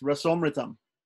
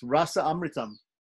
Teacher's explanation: We've dropped out the visarga and it's become rasomritam.